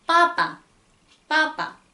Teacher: 여기서는 푸 발음은 온데간데 없고 깨끗이 쌍비읍 발음만 들려요.